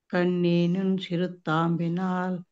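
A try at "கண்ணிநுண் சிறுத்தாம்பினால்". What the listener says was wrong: కన్నీనున్ దీర్ఘం లేదండి, ఒకటే కన్నీనున్.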